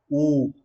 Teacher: ऊ जैसे ही हम बोलते हैं हमारा होठ देखना गोल हो रहा है, ऊ। अब ये जो ऊ से बनने वाले जो भी हैं सारे क्या है, वृत्ताकार होंगे। · ऐसे स्वर हैं जिनका उच्चारण करने पर ओष्ठों का आकार गोल हो जाता है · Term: वृत्ताकार स्वर